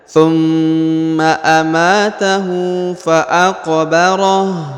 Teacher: Perhatikan huruf mim sukun atau mim tasdid ini ya, ditahan 2 harokat, lalu didengungkan. Thumma amatahu, huruf ma dibaca 2 harokat ya, karena di depannya terdapat alif.